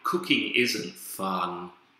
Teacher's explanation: if it's falling intonation probably you'd be indicating a more negative attitude